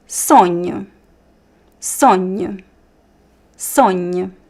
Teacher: the o at the end sounds like a weak u sound.